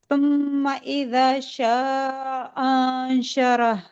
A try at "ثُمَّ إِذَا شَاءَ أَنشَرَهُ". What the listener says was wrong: नहीं, ये हमजा अलग पढ़ेंगे, ये हमजा अलग पढ़ेंगे। शाअ अंशरह, ऐसे। फिर से पढ़े।